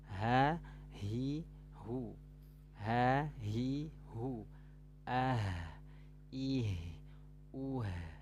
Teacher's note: tenggorokan yang paling bawah pangkal keluarnya huruf ha dan hamzah